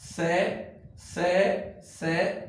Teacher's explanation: बाद है संघर्षी व्यंजन यानी जिनको संघर्ष अधिक किया जाता है जिसको बोलने के लिए हमारा जो मुख है उसको संघर्ष अधिक करना पड़ता है